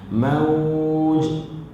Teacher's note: Tapi kalau kita berhenti waja'ahumul mawj, dan bila kita berhenti situ berlakulah qalqalah kubra. Mawj, huruf jim kan, huruf jim adalah huruf qalqalah, jadi ada lantunan.